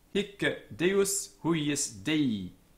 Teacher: Note that hic is a heavy or tense syllable, and the Roman grammarians tell us that the C on the end was doubled, it's a double consonant. This has the effect of tensening up the vowel, making it into a heavy syllable.